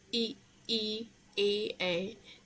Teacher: अग्र स्वर में जो जीभ के आगे के भाग से हम बोलते हैं, जैसे कि ई ए, तो ये अग्र स्वर होते हैं।